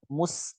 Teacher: tepat ya bukan Mus beda kan Kan hasilnya akan beda Mus sinnya jadi tebal nah ini keliru sinnya harusnya tipis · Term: sinnya tipis